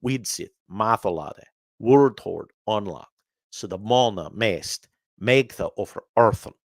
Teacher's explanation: alliteration where the initial consonant sound, like Widsith, Wordhord, Mona, Mest, Megtha, is repeated, sometimes 2 or 3 times.